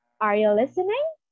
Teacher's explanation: The rising of the voice at the end of the sentence signals a question answerable by yes or no. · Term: rising intonation